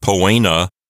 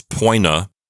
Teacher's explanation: Notice that the O and the E form a diphthong, so it's not poena, it's poina.